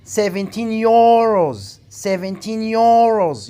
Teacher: You have to put the stress on euros. So you have to put the stress on the second syllable.